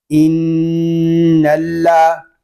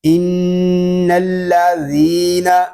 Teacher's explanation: ذال کو ہم ایک الف تک کھینچ کر پڑھیں گے کیونکہ یہاں پہ یا مدہ ہو رہا ہے۔ یا مدہ اس لیے ہو رہا ہے کہ یا ساکن سے پہلے زیر آ گیا ہے۔